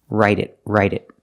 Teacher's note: The T in write changes to a fast D